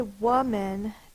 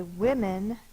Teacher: when we say woman this o says uh when we say women this o says I the short I sound